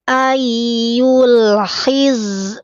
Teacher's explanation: cara membaca huruf zai ketika sukun ya, tidak boleh memantul, kemudian tertahan napas